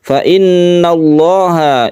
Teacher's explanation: Fa innallaha ini adalah lafdul jalalah yang dibaca tafkhim atau tebal karena sebelumnya ada fathah